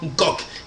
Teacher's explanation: le N, c'est un guttural qu'on rajoute pour donner probablement de l'épaisseur à la prononciation